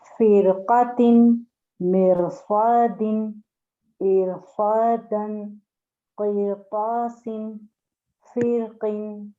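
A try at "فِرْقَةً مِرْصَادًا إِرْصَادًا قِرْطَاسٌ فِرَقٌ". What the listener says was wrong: دوبارہ پڑھیں گے آپ، مگر را کو ہیوی رکھنا ہے.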